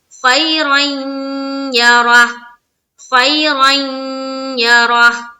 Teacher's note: تو غنہ کے ساتھ جب پڑھیں گے تو نون کی بھی تھوڑی آواز آئے گی اور یا کی بھی آئے گی، تو یہاں پر کیا ہو رہا ہے، ادھورا ہو رہا ہے، ادغام ناقص ہو رہا ہے۔